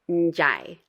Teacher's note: The last example I'm going to go over is probably the hardest for English speakers because you have that initial N followed by a consonant. And again, that DI is pronounced as a J.